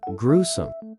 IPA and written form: ˈɡruːsəm (gruesome)